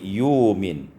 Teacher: wa yu'minu, ibdalul hamzati wawan, ditukar hamzah dengan waw sehingga kita baca wa yu'min.